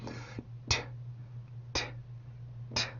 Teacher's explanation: 치조에다가 공기를 막았다가 터트려주면서 만들어주는 폐쇄음이에요